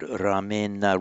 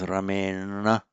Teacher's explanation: This becomes ramena with the retroflexion because of the effect of that r